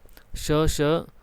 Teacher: श जब बोलते हैं तो दांत के पास जीभ नहीं जाती इसलिए दंत का उदाहरण नहीं है श जो है वो संघर्षी · श जो है वो संघर्षी या स्पर्श संघर्षी हम बोल सकते हैं